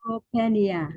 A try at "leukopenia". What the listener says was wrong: Nope. Slowly. So you see how you say pen? There's no pen. P. So it's leukopenia. You're right, but there's no pen. Leukopenia. Remember that the common P. Just speak it slowly, but try to enunciate every white cell count.